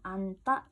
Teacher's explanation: 지읒 탈락시키고 첫째 자음인 니은으로 우리가 발음하죠.